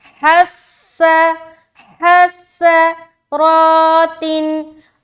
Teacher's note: सीन को अदा करते वक्त सीटी वाली जो सिफत है वो जाहिर होनी चाहिए। ठीक है, सिफत सफ़ीर का खास ख्याल रखें जब भी हर्फ सीन को अदा करे।